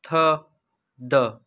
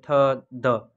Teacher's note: द next is dental, द sound produced by touching tongue to upper teeth